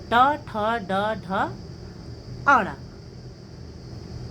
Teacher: इसी प्रकार से तीसरा है ऋटु रसाणाम मूर्धा ऋ टू का मतलब हुआ स्पर्श व्यंजन में ट वर्ग ट ठ ड ढ ण और र वर्ण श यानी मूर्धन्य श राणा मूर्धा यानी मूर्धा से इनका उच्चारण होता है